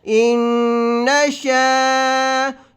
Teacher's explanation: ان، نون زبر نا، ان، شین الف زبر شا، یہ الف ہے اور اس کے پچھلے حرف کا بر زبر ہے، اس کو الف مدہ کہتے ہیں، اس کو آپ نے 1 الف کی مقدار لمبا کرنا ہے